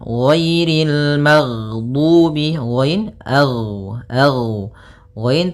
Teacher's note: ghain termasuk salah satu sifat huruf yang dia adalah sifat rokhawah, yang dimana suaranya mengalir. Nah, tapi dia juga termasuk sifat huruf yang dia sifatnya adalah jahar.